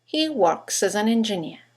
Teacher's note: You've got 3 words that begin with a vowel, as, an, and engineer. In connected speech, they all run into each other. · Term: phonetic links